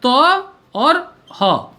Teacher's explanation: जब हम लोग थ का उच्चारण करेंगे तो हो जाएगा त और ह, क्योंकि अंत में यह ह आएगा, ह ध्वनि जो है वह आएगी, इसलिए यह महाप्राण है।